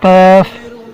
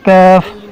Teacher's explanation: موٹا کاف نرم تالوں سے اور باریک کاف زبان کی جڑ اور تالوں کے سخت حصے سے ادا ہوتا ہے